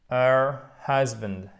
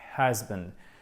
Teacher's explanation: Il y a bien le H aspiré.